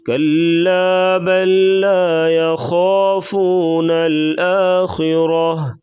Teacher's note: خا کو پر پڑھا جائے گا اور را کو بھی پر پڑھیں گے